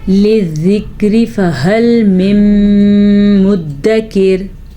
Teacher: را ساکن سے پہلے زیر ہو یا را کے نیچے زیر ہو، دونوں صورتوں میں را باریک پڑھی جائے گی